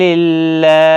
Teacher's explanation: اللہ کا لام باریک پڑا جائے گا اس زیر کی وجہ سے، اس کے اوپر کھڑا زبر بھی ہے، ایک الف کی مقدار کے برابر کھینچ کر بھی پڑھا جائے گا۔